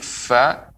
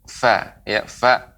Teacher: Fa, udara keluar dari celah-celah, ya, dari celah-celah antara bibir dan gigi seri atas. Maka, ya, muncullah suara atau huruf fa, ya, fa.